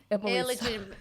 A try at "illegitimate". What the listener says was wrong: Wow, you added some syllables. Illegitimate.